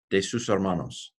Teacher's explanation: Don't pronounce the H.